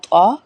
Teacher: وسطن، یہ طوا ہے، یہ تا نہیں ہے، دو نقطے والی تا نہیں ہے۔ طوا جو ہے وہ ہے زبان کی نوک اوپر کے دانتوں کی جڑ سے سختی سے ادا ہوگا، طوا، ٹھیک ہے۔